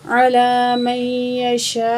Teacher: الف مد زبر شا، حمزہ پیش او، علی من یشاء، تو یہاں جو ہے مد بڑی مد ہے، 5 سیکنڈ کھینچ کے پڑھیں گے ، اور حمزہ اسی کلمے میں ہے تو مد متصل ہے